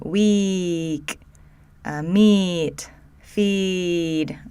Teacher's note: So this is that tense, long vowel we say with E.